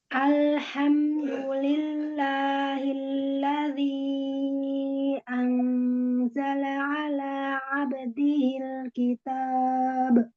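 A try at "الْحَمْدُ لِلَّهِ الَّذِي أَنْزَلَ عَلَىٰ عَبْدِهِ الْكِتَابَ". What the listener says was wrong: Qalqalahnya masih diakhiri hamzah sukun, ya. Alhamdulillah hilladzi. Kalau ibu mengambil huruf H itu ya hanya menyambar aja, jadinya dia hi, bukan hi. Ayo diniatin huruf H-nya, jangan setengah-setengah. Alhamdulillahilladzi anzala ala abdihil kitab.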